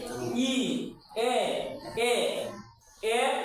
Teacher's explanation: >> তার মানে এই তিনটা স্বরগুন উচ্চারণের সময় আমাদের জিহবার সামনের দিকে থাকে। ই এ উচ্চারণ করে দেখো জিব সামনের দিকে থাকে। পিছনের দিকে থাকে না। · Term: সম্মুখ স্বরধ্বনি